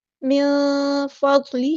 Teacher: یہاں پہ نون کی آواز کو ہم چھپا دیں گے، اخفا ہوگا